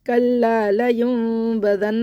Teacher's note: زا نہیں پڑھنا، ہمیں زال پڑھنا ہے. اور زال کا مخرج تو یہ ہے کہ اس کے زبان ہمارے دانتوں کے درمیان میں آتی ہے، تو اس میں ہمیں سیٹی نہیں چاہیے ہوتی کیونکہ بغیر سیٹی کا لفظ ہے، نرمی والا حرف ہے.